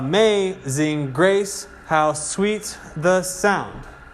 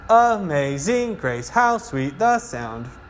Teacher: the pattern is unstressed stressed unstressed stress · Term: meter